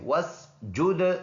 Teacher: दाल में कलकला करेंगे